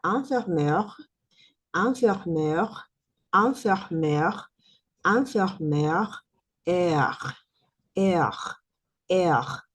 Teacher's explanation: Esa E final no suena con fuerza, pero sí tiene un pequeño E.